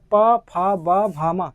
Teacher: जब तक आप दोनों होठ को आपस में नहीं मिलाइएगा तब प, फ, ब का उच्चारण स्थान नहीं निकलेगा, मतलब वर्ण नहीं निकलेगा उस तरह से, ठीक है। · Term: ओट्स वर्ण